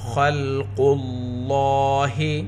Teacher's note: خا حروف مستعلیہ میں سے ہے، خا کو پر پڑھیں گے۔ لفظ اللہ کے لام سے پہلے پیش ہے، لفظ اللہ کے لام کو پر پڑھیں گے اور 2 حرکت کے برابر کھینچ کر پڑھیں گے کیونکہ لام کے اوپر کھڑا زبر ہے۔